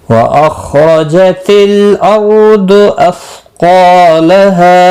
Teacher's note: हा अलिफ मद्दा है, 1 अलिफ के बराबर खींच कर पढ़ेंगे वक़फ़ की सूरत में भी और मिलाने की सूरत में।